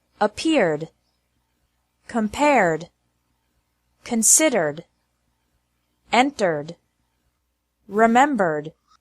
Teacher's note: e d is pronounced like d with no extra syllable after verbs ending with an R sound